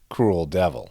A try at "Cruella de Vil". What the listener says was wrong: It's spelled devil, but it's pronounced DeVille.